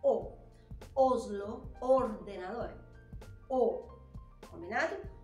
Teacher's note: letra O sempre vai ser o nunca vai ser ó